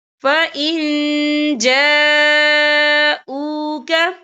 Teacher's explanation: یہ مد جو ہے مد متصل ہے، اس کی مقدار 4 حرکت کے برابر ہے، تو ہم اسے 4 حرکت کے برابر کھینچ کے پڑھیں گے